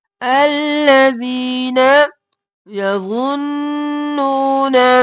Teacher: یا اور زو موٹا اور نون پر تشدید ہے، غنہ